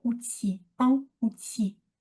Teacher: Le L final ne se prononce pas.